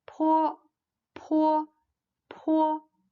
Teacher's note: this one is an aspirated voiceless bilabial the position of articulation is the same as that of bull · The position of articulation is the same as that of bo, but there is air that released forcibly with a poof, with no vibrations of vocal cords.